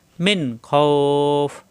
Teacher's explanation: ফ এর সাথে খফ দুই আলিফ টান হবে খফ মিন খফ এখানে কোন গুন্না হবে না মিন খফ নুন সাকিনের পরে খ আসছে